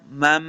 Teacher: हम पहली मीम को दूसरी मीम के साथ मिला के पढ़ेंगे, उसमें मुदगम करना है इसको गुन्ना के साथ।